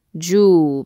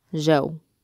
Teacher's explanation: You start with the a and you end on the W. And this is what we call a combination sound.